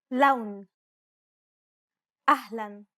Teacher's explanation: Unlike the English L, the tongue is ever so slightly flatter and straighter in Arabic. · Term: Arabic L sound